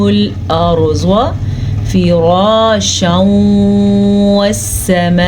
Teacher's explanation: را کو پر پڑھیں گے، را زبر کے ساتھ ہے